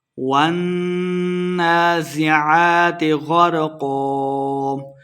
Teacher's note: نون مشدد ہے، غنہ کریں گے۔ والنازعات، کھڑی حرکات کو ہم نے 2 حرکات لمبا کر کے پڑھنا ہے۔